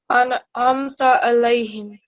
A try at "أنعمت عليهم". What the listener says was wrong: So make sure that the ayn sound does come out, okay? Don't make it sound too much like an alif.